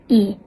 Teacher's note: vokal depan tinggi dan tak bundar